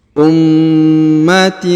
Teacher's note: huruf ma ditahan dan ditekan karena terdapat tanda tasdid ya.